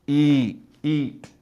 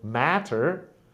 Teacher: mouth should be closed or open so for example e e my tongue is in front my mouth is slightly closed whereas for the word matter my mouth is wide open and my tongue is kind of in the middle